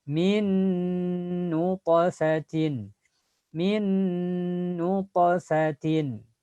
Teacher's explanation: Ada huruf nun mati ketemu dengan nun. Maka bunyi nun pertama hilang langsung ke yang kedua.